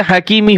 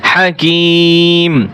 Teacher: ওয়াকফ করলে হাকিমি হবে না, হাকিম